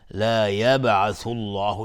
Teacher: لفظ جلاله مفخم هست چون قبل ضمه اومده